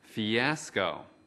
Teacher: Trọng âm của từ fiasco ở âm tiết thứ hai.